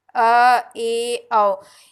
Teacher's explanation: और अर्धविवृत में जो है वो इसमें जब स्वर आपका उच्चारण करते हैं तो मुख जो है वो आधा खुलता है